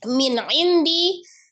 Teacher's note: Nun sukun bertemu dengan huruf ain, hukumnya adalah izhar, dibaca dengan jelas ya. Tapi alirkan nunnya, karena kenapa nunnya memiliki sifat tawassut atau bainiyah ya.